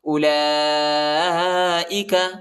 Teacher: لام کے اوپر جو ہے بڑا مد آیا ہے، اس کو تقریباً 3-4 سیکنڈ تک کھینچنا ہے، اور یہ حمزہ ہے، حمزہ زیر ای کھینچنا نہیں ہے زیادہ.